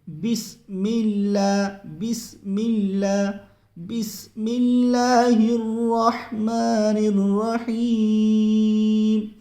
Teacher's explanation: بسم اللہ، اس میں اصل مسٹیک جو ہوتی ہے، غلطی ہوتی ہے ناظرین، وہ یہ ہوتی ہے بسم اللہ ایسے پڑھتے ہیں، اللہ کے نام کو پر نہیں کرنا ہے بسم اللہ کے اندر، اس کو جو ہے باریک ہی پڑھنا ہے